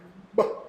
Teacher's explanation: like you're like building up your breath and letting it pop